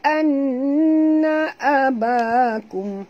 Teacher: an wajib dengung, ya, 2 harakat wajib al-ghunah